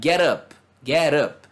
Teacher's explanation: Get up, como se fosse uma só. Inclusive na entonação, né?